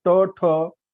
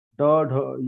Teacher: वैसे ही ट ठ ये कठोर है, ड ढ ये मृदु है